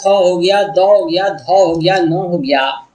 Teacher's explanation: जब आप ये सब वर्ण को बोलेंगे तो आवाज जो है दांत से निकलती है, आपकी जबान दांत में सटते हैं, इसलिए ये दंत वर्ण है।